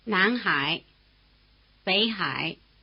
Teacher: when the low tone comes before another low tone something quite different happens it changes to a rising tone · Before the low tone of Hai, the low tone of Bei becomes a rising tone, indistinguishable from the rising tone of Nan.